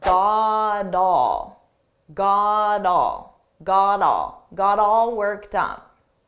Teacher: the T is between 2 vowels, so I'll pronounce this as a very soft D, but I have to combine them together.